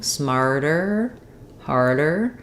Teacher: I'm lifting up for that T and D with my tongue, but it's just a light tap up and then it gets released down. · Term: flap sound